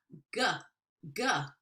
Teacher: You can feel how hard and glottal that is with the back of the tongue.